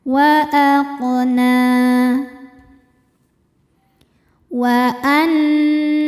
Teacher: Cara membacanya berdengung. tahan dengungannya kurang lebih dua harakat. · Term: dhunah musyaddadah